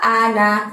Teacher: a-nya buka lebar mulutnya, ana, na-nya pendek ya. Meskipun di tulisannya ada alifnya, tapi kita bacanya pendek.